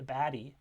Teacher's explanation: in this example we have both of these phonemes becoming the flap sound in this context before an e after the stressed vowel